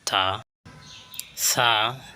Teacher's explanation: জিহ্বার আগা সামনের দাঁতের সামনা সাইডে লাগাইয়া উচ্চারিত হয়